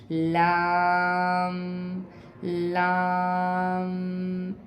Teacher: ज़बान के किनारे को ऊपर वाली दाढ़ों से टच करेंगे और लाम की आवाज़ निकालेंगे